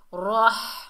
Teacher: ہا کو حلق کے درمیان سے ادا کریں گے